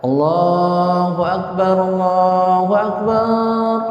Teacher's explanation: itu salah tuh barnya dipanjangkan. Ah, itu patah itu maknanya berubah.